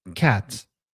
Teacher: if you say cat, c and t are moving sounds. Ah is just stationary.